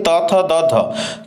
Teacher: आपण दंत्य स्पर्श व्यंजन ध्वनि